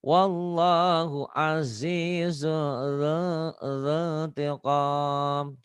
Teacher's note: Jangan kelamaan wallahnya ya, cuma satu alif dua ketukan.